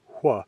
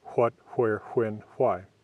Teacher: American English speakers consistently saying hwa, where WH is spelled in a word